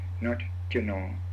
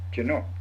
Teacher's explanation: As you know, the man's word for I is Jano, and the man's word for my is almost the same, but there's a slight change. It's pronounced with a creaky tone instead of a low tone.